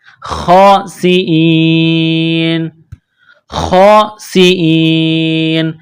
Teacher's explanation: جب یہاں سٹاپ کریں گے تو نون کو سائلنٹ کریں گے